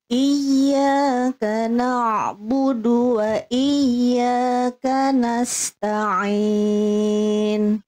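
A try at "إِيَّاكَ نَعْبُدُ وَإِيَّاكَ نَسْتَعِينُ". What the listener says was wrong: Si bagus, tinggal ditipiskan huruf ainnya Bunda, jangan tapi ya, na'budu, coba Bunda ikuti saya, na'budu, nah di ujungnya jangan jangan kayak ada hamzahnya, na'budu. Na'budu.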